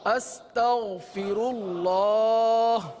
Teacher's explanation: استغفر اللہ. استغ نہیں, غین ہے, حلق کے اوپر والے حصے سے ادا ہوتا ہے, غین کو پر ادا کرتے ہیں